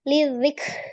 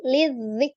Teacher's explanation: huruf kaf adalah huruf yang siddah. Berarti suara tertahan. Tetapi memiliki sifat al-hams.